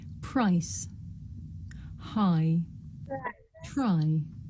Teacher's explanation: This is a diphthong, a double vowel sound. The shape the mouth makes changes from the beginning of the sound to the end. It's pronounced I.